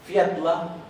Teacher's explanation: la doble L se pronuncia dl o tl en algunos casos